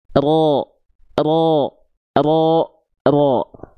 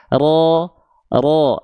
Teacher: Jadi yang nempel adalah bagian punggung lidah bukan bagian ujung lidahnya banget.